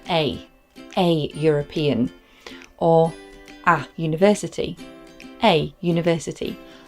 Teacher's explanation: You may hear it pronounced a European, or a university, a university. We wouldn't say an university because of the sound that the vowel is making, the y sound.